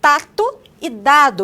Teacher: Aqui, essa obstrução acontece nos alvéolos, cuja articulação é feita com a ponta da língua na região dos alvéolos, como em tato e dado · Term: oclusivas alveolares